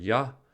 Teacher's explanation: the middle of the tongue is raised towards the roof of the mouth